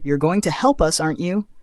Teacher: Structure positive statement, comma, negative tag, with rising intonation for emphasis